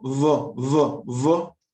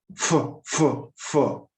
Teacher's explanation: So V is voiced. You produce the sound down here, and F, F is unvoiced. You blow air out, but they both look the same.